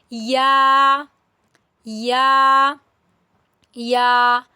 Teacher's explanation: या जुबान के दरमियानी हिस्से से अदा होने वाला हर्फ है